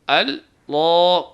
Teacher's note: جو پہلے الف آیا ہے یعنی حمزہ آیا ہے اس کو بھاری نہ کریں